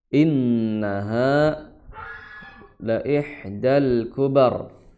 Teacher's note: Inna langsung masukkan nun, ya, langsung masukkan nun, kemudian tahan 2 harokat ya, karena nun dia memiliki sifat gunnah, innaha la ihdal kubar, innaha la ihdal kubar ya, ha 2 harokat ya di pangkal tenggorokan, kemudian la ihda ha.